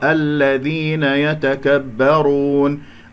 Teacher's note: الراء مفخمة لأنها مضمومة